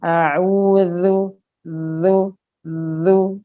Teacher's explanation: Yang benar adalah keluar ke ujung gigi, sehingga tidak ada desis di situ, tidak ada nafas yang terdengar jelas. Hanya tinggal suaranya a'udzu zu zu, bukan zu, ya. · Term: dzal